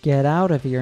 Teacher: T at the end of get and out is pronounced with a flap t or d sound the words then flow into each other to sound like get